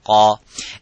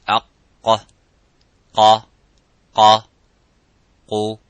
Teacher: the letter qaf, it has an echoing sound. It is harf mufakham, it is a little bit strong. So when we pronounce the qaf, we try to pronounce it audibly, and as it is qa, by opening slightly the lips vertically and making that sound and echoing by saying qa.